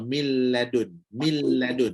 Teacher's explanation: bila Nun tu masuk dalam lam masuk keseluruhan dalam lam maka Nun tu dah tak ada